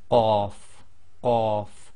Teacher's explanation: the blocking of the air first and then releasing when you say qaf, qaf. And it's one of the tafkhim letters again, plus it's qalqala.